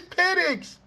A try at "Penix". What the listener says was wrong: So now you forced it by changing the E sound. You that makes it worse.